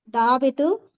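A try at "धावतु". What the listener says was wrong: ఇప్పుడు వి రాదు. ఇప్పుడు వి రాదు. దావతు, ధావంతు అంతే.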